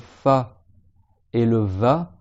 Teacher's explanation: c'est la lèvre du bas qui va sur les dents du haut